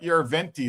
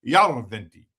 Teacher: They emphasize the first syllable.